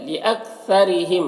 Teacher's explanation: را کے نیچے زیر ہے تو را کو باریک پڑھیں گے